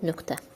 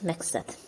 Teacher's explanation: q-dan sonra kar samit gəldi, ona görə də k kimi tələffüz olundu.